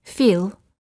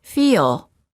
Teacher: when a long vowel is followed by an l put an extra a sound in between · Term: long vowels plus l